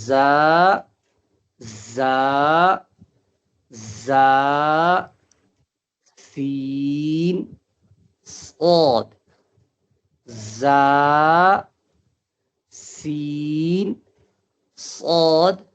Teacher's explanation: تو زا سین صاد میں تھوڑی سی سیٹی آواز آنی چاہیے، یعنی سیٹی والی آواز نکلنی چاہیے